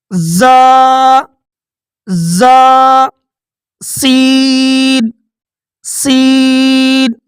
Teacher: ان 3 حروف زا، زا، سین، صاد کو ادا کرتے وقت سیٹی کی طرح تیز آواز نکلتی ہے، اسی لیے ان حروف کو صفیریہ یعنی سیٹی والے حروف کہتے ہیں۔